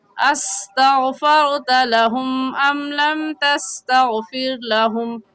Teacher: سین کا مخرج یہ ہے کہ دونوں دانتوں کو ملا کر زبان کی نوک لگانے سے سین نکلتا ہے، اور سین سٹی والے حروف میں سے ہے کہ جب ان حروف کو ادا کریں گے سین کو تو ہلکی سی سیٹی کی آواز آئے گی ایسے استغفرت لہم ام لم تستغفر لہم۔ استغفرت لہم میں رغا ساکن سے پہلے زبر ہے تو رغا ساکن کو پور کریں گے، یعنی ہونٹوں کو گول کر کے پڑھیں گے، اور تستغفر لہم میں رغا ساکن سے پہلے زیر ہے تو رغا ساکن کو باریک پڑھیں گے، یعنی ہونٹوں کو پھیلا لیں گے۔